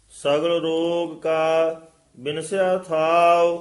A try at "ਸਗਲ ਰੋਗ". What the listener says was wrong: ਗੱਗਾ ਸ਼ੁੱਧ ਬੋਲਣਾ ਹੈ। ਸਗਲ ਰੋਗ ਕਾ, ਰੋਗ ਇਉਂ ਨਹੀਂ ਬੋਲਣਾ। ਸਗਲ ਰੋਗ ਕਾ।